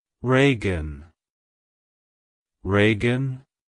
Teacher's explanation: to pronounce it correctly emphasize the first syllable re e and the second syllable gun like hello Reagan goodbye